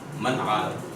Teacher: نون ساکن کے بعد عین آیا, غنہ نہیں ہوگا